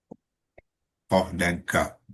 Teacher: Kaf ni di hadapan sikitnya, kedudukan dia, makhraj dia di hadapan selepas qaf ya. Qaf ni bila kita menyebutnya, kita akan naikkan pangkal lidah tu hampir ya kepada langit-langit lah.